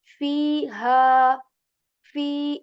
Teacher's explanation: I'm stretching the sound of Fe and ha both for two times